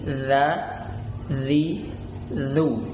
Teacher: ujung lidah bertemu dengan ujung gigi seri atas.